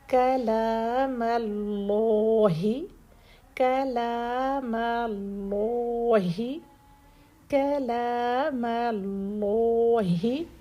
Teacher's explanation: کاف لام میم یہ تینوں لیٹر سافٹ رہیں گے، صرف آگے ہم نے لام کو ہیوی کرنا ہے. ایسا نہ ہو کہ کاف سے ہی کاف بھی ہیوی کر دیں، پھر لام بھی ہیوی کر دیں، پھر میم مول رو.